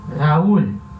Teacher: É um hiato de uma vogal A, que é uma vogal aberta, e uma vogal U, que é a vogal fechada. Aberto com fechado vai ter acento.